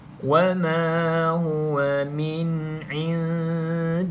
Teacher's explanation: nun mati ada tanda mati terus baca dengan izhar iaitu bacaan jelas